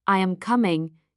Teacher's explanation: In statements, I am coming. Your voice falls at the end. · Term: Intonation